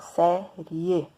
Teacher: o E é mais forte. E aí eu tenho a semivogal que é fraca e a vogal que é forte. Então, eu passo do menor para o maior, eu estou crescendo. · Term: tom crescente